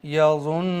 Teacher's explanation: نون پر focus کریے گا، یظن، اس نون پر میں نے حرف غنہ ہی کیا ہے، یعنی حکم ہے نا یہاں پر 1 الف کے برابر غنہ کرنے کا، تو اس نون پر میں 1 الف کے برابر رکا رہا ہوں